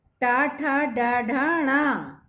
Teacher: टा ठा डा ढा णा मूर्धन्य कहे गए हैं क्योंकि इनका उच्चारण जीभ के मूर्धा से लगने पर ही संभव है।